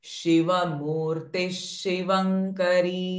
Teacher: visarga sound will become sh and not remain ha.